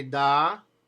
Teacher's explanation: it's actually said with the flat part of your tongue right behind that ridge where you're behind your front teeth. It's called the alveolar ridge.